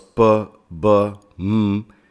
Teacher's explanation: los sonidos p, b, m se producen con los 2 labios y consecuentemente se clasifican como sonidos bilabiales